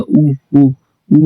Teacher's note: आपका जो होठ है वो गोल आकृति में दिखेगा उस टाइम पे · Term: वृत्त मुखी